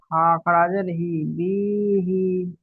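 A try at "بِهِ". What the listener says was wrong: খারাজের কে টান দিতে বলছি, আপনি বি কে টান দিচ্ছেন। বিহি, হা খারাজের হি টান দিতে বলছি আমি।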